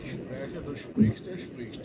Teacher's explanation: na forma segunda e terceira pessoa, o vogal sofre uma mudança, né? O E vira I.